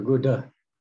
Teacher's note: it's a palatal sound. So the tongue is touching the top of the palate.